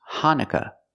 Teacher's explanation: the second vowel is a short u sound uh like cup and up